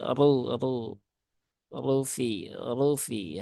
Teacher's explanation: dibaca dengan tafkhim ya dengan tafhim dengan tebal